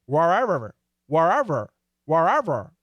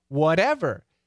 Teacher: the american r the tongue never touches but the d and the t they do